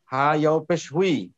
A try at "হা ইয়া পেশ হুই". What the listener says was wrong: ইয়াও না, ইয়া, হ্যাঁ, হা ইয়া পেশ হুই, আর